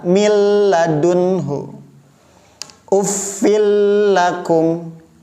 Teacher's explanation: Nah, kalau bila gunnah tanpa dengung, jadi cara bacanya hanya sekedar meleburkan saja menjadi satu huruf seperti huruf yang ditasydid. Mil ladunhu, mil, lam di sini tidak menggunakan tasydid, tapi cara bacanya seperti ditasydid dan tanpa guna, sehingga bacanya datar.